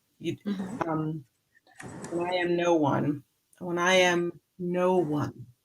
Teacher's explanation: I would put just a little bit of a tenuto on the no one for the N